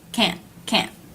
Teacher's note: if the sound is abrupt and chopped can't can't then it's the word can't